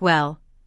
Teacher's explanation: Notice how the vowel is drawn out, to sound like well.